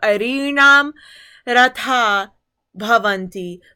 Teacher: The reason why the visargas drop is because when a visarga is preceded by an a and followed by a soft consonant, in this case it is the bha in bhavanti, that visarga is dropped